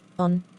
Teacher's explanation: produced in the back part of the vocal tract with the tongue open and low in the mouth and in a rounded position